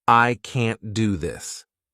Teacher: Americans don't really pronounce this T in the end